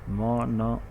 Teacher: due to the velum becomes lower, and because of that, there is complete blockage in the case of oral cavity, and the air comes outside through the nose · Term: nasal